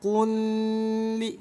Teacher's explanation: Jangan ditahan, kulli, nggak boleh didengungkan. ya. Idgham mutamatsil itu nggak boleh dengung, harus dibaca lebur. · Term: idgham mutamatsilain